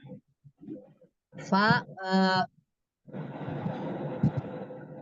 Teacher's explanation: Huruf fa, Fa gigi seri atas, bibir bagian dalam bertemu dengan gigi seri atas. ujung gigi seri atas bertemu dengan bibir bawah Bibir bagian bagian dalam.